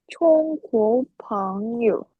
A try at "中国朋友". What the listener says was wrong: Cuma yang congnya ini nggak keluar udara ya. Cong, bukan cong, tapi cong.